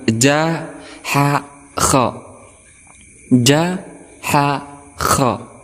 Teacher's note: untuk kha ini dia berada di tenggorokan, tetapi dia berada di pangkal lidah. Oke, perhatikan gambar di sini.